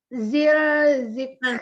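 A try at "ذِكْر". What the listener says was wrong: Bukan zil sayang. Ini bukan zil. Lagi.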